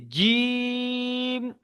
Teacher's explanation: জিমটাকে জিহ্বার মাঝখান থেকে উপরের তালু থেকে উচ্চারণ হয়